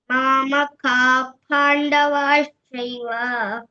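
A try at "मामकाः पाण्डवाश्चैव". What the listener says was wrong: ಇವಾಗ ಪ ಸ ಶ ಶ ಈ ಮೂರ್ ಬಂದ್ರೆ ಅದ್ರ ಹಾಫ್ ಲೆಟರ್ ವಿಸರ್ಗ ಆಗಿ ಹೇಳ್ಬೇಕು. ಸೊ ಇದು ಪ ಇರೋದ್ರಿಂದ ಒಂದು ಎಫ್ ತರ ಸೌಂಡ್ ಬರುತ್ತೆ. ಮಾಮಕಾಫ್ ಪಾಂಡವಾಶ್ಚೈವ. ಹಾ, ಶೆಫ್ ಅಂತ ಏನ್ ಹೇಳ್ತೀವಲ್ಲ ಹಾಫ್ ಸೌಂಡ್ ಇಲ್ಲಿ ಬರ್ಬೇಕು. ಅದ್ ಎರಡು ಡಾಟ್ ಇದೆ ಅಲ್ವಾ ಕಾ ಆದ್ಮೇಲೆ.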